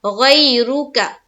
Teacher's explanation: गई में यालीन का कायदा जल्द और नरमी के साथ अदा करेंगे